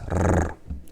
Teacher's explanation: The R. Now R in Polish always sounds the same, but it's the kind of, it's called the rolling R. So it's rrr.